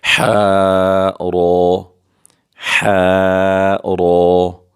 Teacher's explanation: ح بغیر نقطے کے یہ ح آیا ہے، یہ وسط حلق سے ادا ہوگا، یہ حروف حلقی میں سے، اور را کو پر کر کے پڑھیں گے، جیسا کہ ح را، ح را۔